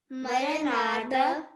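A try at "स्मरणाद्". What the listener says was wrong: Okay, less pressure, I know. Smaranada. So S would be like, not silent, but very less.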